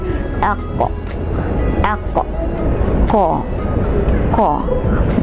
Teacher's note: Ko bunyinya di bahagian anak tekak, iaitu bahagian lidah di bahagian anak tekak.